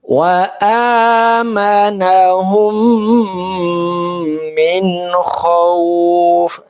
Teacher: Maka ini hukum bacanya adalah idgham misli atau idgham mimi, ya. Maka mimnya didengung, ditahan, ya, minimal 2 harokat.